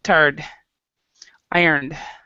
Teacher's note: when you're actually saying them, you don't even say the E sound.